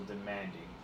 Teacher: the vowel sound, the strong one is the A, but it's closed off by two consonants